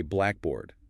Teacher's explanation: If you say a blackboard with stress on black, you're talking about the thing in a classroom, the compound noun. · So, words that are made by sticking two nouns together to make a new concept, like noun plus noun, the rule is very strict. The main stress must fall on the first element, not the second. And that stress pattern signals to the listener that it's one single thing >> immediately. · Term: compound stress